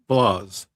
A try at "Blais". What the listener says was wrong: Well, it's pronounced Blais, actually. In French, we don't pronounce the S. Yeah, it's a French name, so it's just Blais.